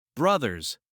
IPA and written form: ˈbrʌðərz (Brothers)